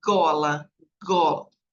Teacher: velar quer dizer que a gente usa o palato mole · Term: velares